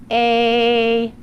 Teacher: the front part of your tongue is in the middle of your mouth your lips are flat and your mouth is slightly opened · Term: long a